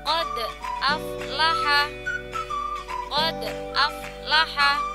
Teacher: Jadi bacanya dipantulkan, bunyi huruf dal sukunnya ini dipantulkan. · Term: qalqalah sughra